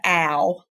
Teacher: when you say the sound ow you feel what happens in your mouth you open it up and then you close it